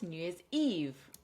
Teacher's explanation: Now I know it's three words, but there is still a stress pattern because this is what is called a compound noun, where you put more than one noun or adjective together to make a new kind of word. So three syllables, New Year's Eve. Stress on the last syllable